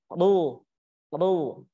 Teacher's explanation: Kenapa dia bisa tafkhim? Karena terangkatnya pangkal lidah. Ro, seperti itu. · huruf ro ini berada di ujung lidah, bertemu dengan tanjakan langit-langit bagian atas